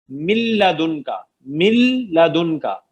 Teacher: نون کی ساؤنڈ ہی نہیں رہے گی, میم کو ڈائریکٹ مرج کریں گے لام کے ساتھ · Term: ادغام